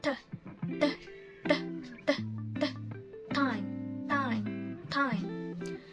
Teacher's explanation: Time is a plosive sound. So the air is blocked, and then you push like time.